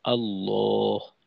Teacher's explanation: আল্লাহ শব্দের লামকে মোটা করে পড়তে হয়